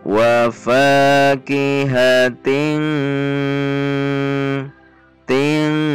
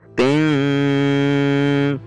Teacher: tidak ada gunnah yang tebal seperti pada huruf kaf. Bukan dibaca ting, tidak tebal, tidak juga dibaca samar yang tinggi ting, namun masuk menekan pada titik huruf kaf.